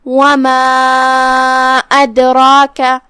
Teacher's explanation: وما ادراک، کلمت ادراکہ میں یہاں حرف الدال ہے اور اس پہ جزم ہے، تو یہاں دال کا حکم ہے قلقلہ، لہذا ہم دال کو ہلاتے ہوئے یہ کلمہ کو ادا کریں گے